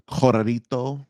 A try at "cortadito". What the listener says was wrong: No, there's a T in there. Try it again. Cortadito.